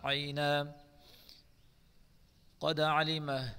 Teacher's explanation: دال میں قلقلہ کریں گے